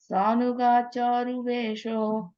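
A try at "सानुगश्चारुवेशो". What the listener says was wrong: In the sanugash, there's a ish sound there. You have an ish, right? Sanugash charuvesho.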